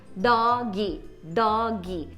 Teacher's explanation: É essa vogal de apoio que a gente coloca no final de algumas sílabas, que na verdade não existe no inglês. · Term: epêntese